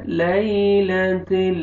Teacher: یا لین ہے، یا جزم سے پہلے زبر، آپ نے نرمی سے ادا کرنا ہے